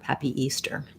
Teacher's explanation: in the phrase Happy Easter, the main stress is going to be on the Easter. The happy is going to be a little shorter